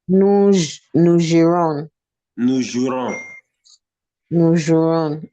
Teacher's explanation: In many instances, the E before the R is silent, especially in verbs ending in IRE, RER.